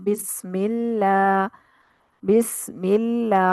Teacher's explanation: जैसे हम बिस्मिल्लाह, बिस्मिल्लाह पढ़ते हैं, इसको बिस्मिल्लाह नहीं करना, बिस्मिल्लाह, क्योंकि मीम अल्लाह के लाम से पिछला हर्फ मीम है, तो मीम के नीचे जेर है, इसलिए अल्लाह का लाम बारीक हो जाता है